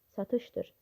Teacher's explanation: Vurğu sonuncu ecada deyil, ikinci ecadadır.